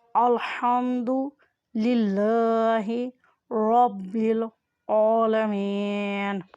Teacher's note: ہا کی آواز حلق کے درمیان والے حصے سے ادا کریں۔ میم کے اوپر کھڑی زبر ہے اس لیے اسے کھینچ کر ادا کریں۔